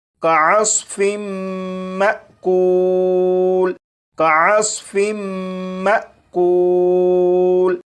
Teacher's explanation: حمزہ ساکنہ کو جھٹکا دے کر پڑھیں گے